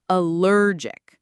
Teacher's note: Notice the stress is on the second syllable